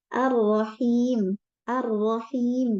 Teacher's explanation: Langsung masuk ke ro. Tidak al-Rahim tapi langsung ar-ro. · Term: idgham kamil